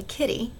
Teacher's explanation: a kitty with stress or emphasis on that first syllable ki